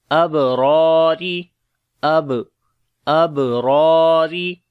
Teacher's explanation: On the ba we make qalqala, ra we read in heavy sound, and also we long due to alif madda is there, and this second ra we read in light sound due to kasra under it. · this second ra we read in light sound due to kasra under it. So we say abrari.